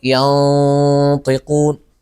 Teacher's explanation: لاحظوا هنا الغنة مفخمة لأنها حرف استعلاء